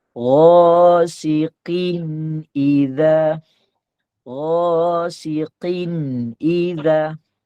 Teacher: Kita akan baca kin, kita baca jelas. Dia tak ada panjang harkat dia. Satu harkat je, kita baca jelas. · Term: izhar halki